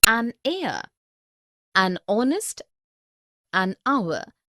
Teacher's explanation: Because the words heir, honest and hour begin with a vowel sound, as the initial consonant H is not pronounced